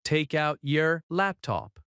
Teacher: Notice how the T at the end of take connects to out. · In fast speech, take out often links and sounds like ta, count. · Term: linking